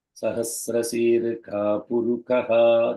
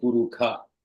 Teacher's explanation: It's called Purukha Suktam in Shukla Yajurveda because Shakara becomes Kakara in Shukla Yajurveda.